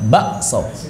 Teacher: Kafnya diibdal menjadi hamzah